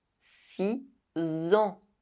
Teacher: number six is replaced by a [z] sound in the liaison.